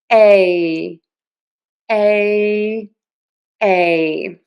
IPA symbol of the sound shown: eɪ